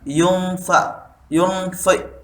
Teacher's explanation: Ikhfa di sini terjadi karena adanya nun mati menghadap huruf fa, membacanya disamarkan. Jadi membaca samar-samar itu kita harus ya yunfi gitu.